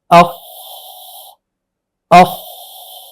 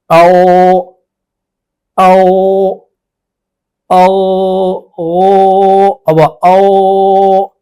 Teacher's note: تو ان دونوں کی ادائیگی میں آواز جاری رہتی ہے، کیونکہ صفت ان کے اندر صفت جو ہے وہ رخاوت ہے، تو آواز بند نہیں ہوتی شدت کی طرح بلکہ آواز جاری رہتی۔